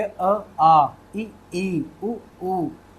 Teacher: मैं जब अ बोल रहा हूं तो बहुत छोटा बोल रहा हूं। आ बोल रहा हूं तो थोड़ा लंबा खींच के बोल रहा हूं। थोड़ा सा लंबा खींच रहा हूं। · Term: लंबाई